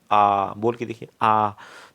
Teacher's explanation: जो विवृत होता है इसमें आ आता है, इसमें पूरा मुख खुलता है, सबसे ज़्यादा मुख इसमें खुलता है